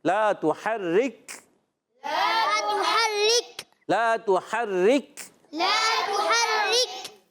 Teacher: کاف ساکن ہے، آواز آئے گی، یہ شدیدہ محموسہ حرف ہے، کاف باریک بھی رکھنا ہے